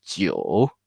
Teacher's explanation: The curve, the roller coaster to go down and then go up. Go down, go up.